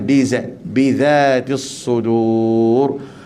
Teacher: Pastikan zal di sini jangan bunyi bizatis sudur dengan zai, tak boleh.